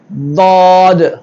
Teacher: தா நாக்குடைய ஆரம்பப் பகுதி மேல் முரசுல படுற மாதிரி